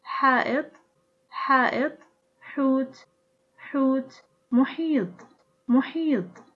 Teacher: it is articulated with the tongue root against the back of the throat